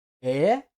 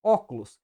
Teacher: vogais abertas e vogais fechadas e aqui nas vogais abertas temos um som produzido com a língua levemente abaixada e a cavidade bucal mais aberta